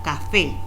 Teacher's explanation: la mayor fuerza la hacemos en la tónica, que es la fe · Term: sílaba tónica